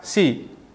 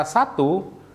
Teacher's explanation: vokal I dalam kata si, itu memiliki lidah yang tinggi di mulut, sedangkan huruf A seperti di dalam kata satu, itu memiliki lidah yang lebih rendah.